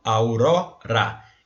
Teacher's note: Na palavra aurora, a sílaba tônica é o ró, aurora. Então, a gente vai contar até essa.